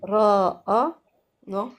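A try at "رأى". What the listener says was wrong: C'est l'alif qui est prolongé. Pourquoi tu prononces le ra? ra. Ra'a. Ra'a.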